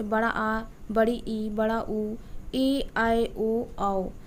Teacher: इन शब्दों का उच्चारण करने में ह्रस्व स्वरों की अपेक्षा बहुत अधिक समय लगता है। कह सकते हैं कि इनमें 2 गुना समय लगता है स्वर वर्णों की अपेक्षा। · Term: दीर्घ स्वर